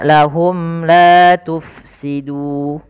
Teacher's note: Maka cara membaca daripada ikhfa syafawi ini adalah suara mimnya harus jelas dan tidak boleh ditahan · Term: izhar syafawi